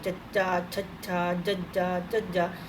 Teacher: ਫਿਰ ਕਠੋਰ ਤਾਲਵੀ, ਮਤਲਬ ਜੀਭ ਆ ਜਿਹੜੀ ਕਠੋਰ ਤਾਲੀਏ ਨੂੰ ਟੱਚ ਕਰੂਗੀ, ਚੱਚਾ, ਛੱਛਾ, ਜੱਜਾ, ਝੱਜਾ, ਤਾਂ ਉਹ ਠੋਰ ਤਾਲਵੀ।